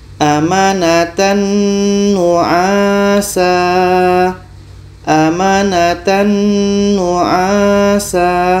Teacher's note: Amanatan nu'asa. Tanwin sempurna masuk ke nun. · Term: idgham kamil